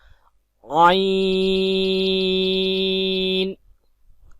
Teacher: عین کو حلق کے درمیان والے حصے سے ادا کریں گے